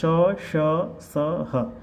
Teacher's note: उष्म श ष स ह ये उच्चारण को ध्यान में रखना है तालव्य मुर्धन्य दंत्य और कंठ है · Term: उष्म वर्ण